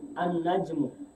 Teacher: Jadi lamnya tidak dibaca, langsung ke nun.